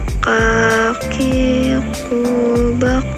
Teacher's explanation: Selanjutnya huruf k, diucapkan dengan menyentuh pangkal lisan dengan langit-langit bagian belakang dan diucapkan dengan mengeluarkan udara dengan lembut.